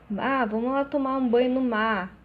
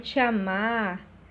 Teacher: É costume do carioca, né? Omitir esse R, né? Esse R quase não é pronunciado, né?